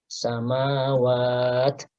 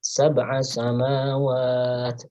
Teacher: karena diakhiri dengan huruf ta, taknya ini punya sifat hams sehingga harus diberikan dorongan nafas ya.